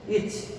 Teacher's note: চটা উচ্চারিত হচ্ছে, এখানে কিন্তু পুরোপুরি মানে অ ধ্বনিটা ছাড়াই উচ্চারিত হচ্ছে